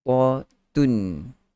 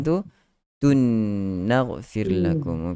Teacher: Idgham ma'al ghunnah yang kita masukkan secara totally. Kita masukkan secara 100%. Maksudnya tidak lagi ada tanwin di situ. Po masuk campur dengan nun. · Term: idgham kamil